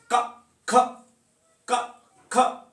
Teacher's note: जीव की जड़ से एक तरह से उच्चारण होता है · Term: जिव्या मूल, जिव्यामूल वर्ण